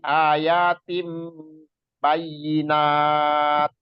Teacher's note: Ayatim tanwin kasrotain bertemu ba. Jadi dibacanya mim ya, dia yang disebut iklab.